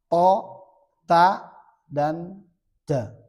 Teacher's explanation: Dari mana tempatnya ujung lidah beserta pangkal gigi seri. Berarti dengan di mana tumbuhnya gigi seri kita. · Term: huruf nit'iyah